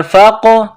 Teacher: نقطوں والا بڑا قاف ہے، اس کو موٹا کرنا ہے، قاف کے اوپر قلقلہ کریں گے